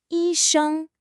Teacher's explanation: The first tone has to be high and level. A lot of people let it waver.